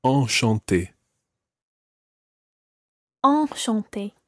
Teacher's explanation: Enchanté is a slightly different nasal sound, and your mouth needs to be wider for that.